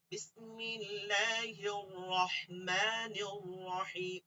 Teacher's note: এই যে আর রহমানির, এই যে রটাকে পুর করতে হবে